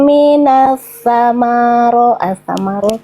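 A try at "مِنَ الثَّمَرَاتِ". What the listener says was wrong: panjang bunda teh bacanya udah bagus sebenarnya cuman tegang jadi banyak yang yang tiba-tiba menghilang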